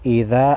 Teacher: حمزہ زیر ای ذال، الف زبر ذا، ایذا الف مدہ ہے 1 الف کے مقدار کھینچیں گے